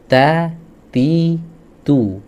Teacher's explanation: nafas nya harus ngalir suaranya gak boleh ngalir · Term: sifat syiddah